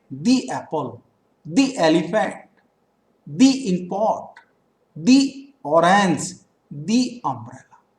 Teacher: जब टी H E किसी vowel sound से पहले यूज होता है तो हम टी एच ई को दी पढ़ते हैं